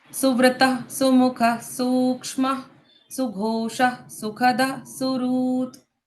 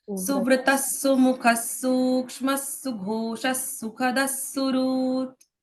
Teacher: ये जो विसर्ग है सारे इसको आधे स के उच्चारण लगते हैं